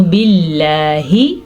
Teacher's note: لفظ اللہ کو باریک پڑھیں گے کیونکہ لفظ اللہ سے پیچھے زیر ہے